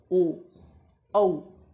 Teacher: जब हम ओ बोल रहे हैं तो हमारा होठ जो है वो उ की तरह ही गोलाकार हो रहा है · कंठ और होंठ की मदद से कहता हो क्योंकि स्वर हैं तो कंठ से तो निकलेंगे ही, लेकिन साथ में होंठ का प्रयोग हो रहा है कि जब हम ओ बोल रहे हैं तो हमारा होंठ जो है वो ऊ की तरह ही गोलाकार हो रहा है, ओ औ। जब ये बोल रहे थे होंठ अगर आप बिल्कुल स्ट्रेट रख करके अगर बोलने की कोशिश करेंगे कि ओ और औ का उच्चारण, तो आप कभी नहीं कर सकते इसका, है ना। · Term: कंठोष्ठ